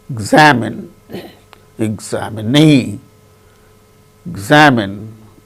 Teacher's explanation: particular syllable in a word see for instance examine examine examine in the case of the word examine second syllable gain stress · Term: word stress